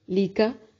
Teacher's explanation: लाम और काफ को बारीक पढ़ेंगे